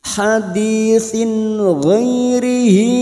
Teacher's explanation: Sin huruf sa yang berharokat kasrah tanwin bertemu ghain namanya idhar halqi, dibaca jelas tanpa mendengung.